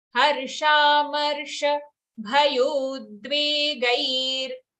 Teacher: Harsha, sha long, then marsha, sha short.